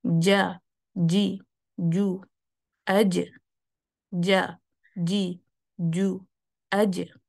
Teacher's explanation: Again جیم میں ایک مسئلہ آتا ہے جب ہم، چونکہ جیم میں شدہ ہے اور آپ کو پتہ ہے شدہ وہ والے حروف ہوتے ہیں جس میں آواز بھی بند ہو جاتی ہے، جو اس میں بہت شدت ہوتی ہے، اور اس میں کیا ہے کہ آپ کی سانس بھی نہیں ہوتی۔